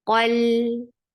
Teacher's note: Qaf is heavy, lam is light. And for fatha, open your jaws, attach with lam. · Lam will get sifa of tawassut.